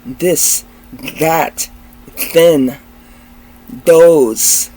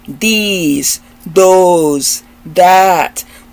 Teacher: It's a voice sound where air comes from your mouth and your upper teeth are hitting your tongue.